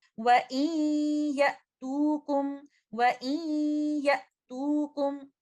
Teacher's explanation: ये इदगाम गुन्ना के साथ होगा, और ये इदगाम नाकिस होगा